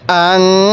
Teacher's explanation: নাকের বাঁশি দ্বারা গুণনা করবেন